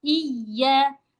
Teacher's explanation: Kalau iya iya naikin suaranya sedikit tapi enggak berlebihan.